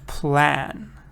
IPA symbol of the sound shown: æ